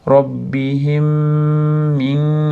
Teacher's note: robbihimda ikkita mim bir joyga kelganligi uchun bir-biriga kirib ketyapti